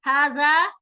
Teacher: हाजा में हा के ऊपर खड़ी जबर है तो उसे लंबा करें, जा नरमी से अदा होगा , हाजा, हाजा नहीं पढ़ेंगे, बुजिंग साउंड नहीं आएगी, हाजा, जा